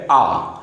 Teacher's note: आ के उच्चारण में हमारे दोनों जबड़े पूरी तरह से खुल जाते हैं इसलिए आ को बोलते हैं विभ स्वर आ को बोलेंगे विभ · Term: विवृत स्वर